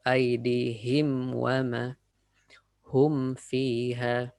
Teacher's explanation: be careful with waw and fa, because they're on the same makhraj, same exit point. So it may sound like aydihim. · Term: idhar